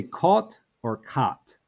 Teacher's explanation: if you're in New England, you can't tell the difference between caught and cot.